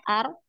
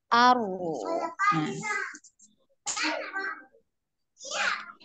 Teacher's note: Nah, dialirkan aru ya. Aru ya, ada aliran suara. Jadi sekali aja getarannya ar. Nah, sekali ya ar, kemudian dialirkan gitu ya. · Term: ro sukun